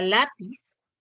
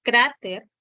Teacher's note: Entonces, ¿dónde presentan la mayor fuerza de voz? En la penúltima sílaba. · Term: palabras graves